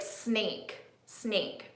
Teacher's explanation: I can feel air coming out and my vocal cords aren't doing anything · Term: unvoiced